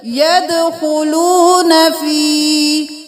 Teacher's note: دال قلقلہ ہوگا کیونکہ یہ ساکن ہے. يدخلون في. خو کو پر پڑھیں گے، موٹے حروف میں سے ہے.